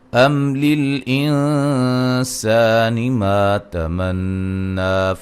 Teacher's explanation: میم ساکن کا اظہار ہے، یہاں نون ساکن کا اخفا ہے. مد اصلی ہے، الف مدہ ہے، نون مشدد پہ غنہ ضروری ہے، مد اصلی ہے.